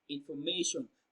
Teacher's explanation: the stress falls on the third syllable, may. Information. May is pronounced louder and longer.